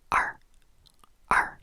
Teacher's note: So add like a little, so imagine like when you're saying the r sound, which is add, pretend there's like an a or an e in front of it, which is how you spell it, r, r. It comes back from the throat a little bit.